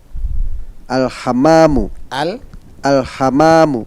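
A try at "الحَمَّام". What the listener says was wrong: Hammamu. Nah, memnya di sini ditasdid, jangan lupa. Ulang sekali lagi.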